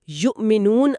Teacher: یو کے بعد او پر آپ کو اپنے گلے کے اندر ایک تناؤ اور ایک لمحے کا لاک محسوس ہوگا۔ سیٹ بیلٹ کے جھٹکے سے لاک ہونے جیسا۔ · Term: گلوٹل سٹاپ